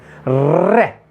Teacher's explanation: बार बार हमारी जीवा घूमती है और टकराती है हमारे तालव्य से या मूर्धन्य से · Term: लुंठित